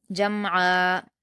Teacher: جمعا میں میم پر جزم ہے تو میم ساکن کو قلقلہ نہیں کیا جاتا